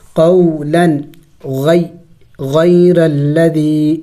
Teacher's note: یہاں پہ اخفاء نہیں ہوگا، یعنی ناک میں آواز چھپانا نہیں ہوگا، بلکہ تنوین کو ظاہر کر کے پڑھیں گے · قولن کو قو کو جلد پڑھنا ہے، اس لیے کہ حروف لین ہے، واو ساکن سے پہلے زبر ہو تو اس کو حروف لین کہتے ہیں، اور یا ساکن سے پہلے زبر ہو تو اسے حروف لین کہتے ہیں۔